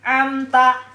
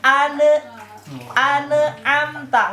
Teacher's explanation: Mengeluarkan setiap huruf dalam makhrajnya huruf atau dari makhrajnya huruf tanpa ada gunnah. Jadi makhrajnya n harus jelas, makhrajnya nun mati harus jelas, tidak boleh ada gunnah. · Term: idhar